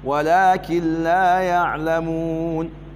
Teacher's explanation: نون ساكنة حكمها الإدغام بلا غنة لذكر اللام بعدها واللام أحد حرفي الإدغام بلا غنة نون الأورارا وكنت انت إدغام بعد قلنا بدهم يا أنبت اللام بانتا كما اللام إنك سين حرفا إدغام بعد قلنا با.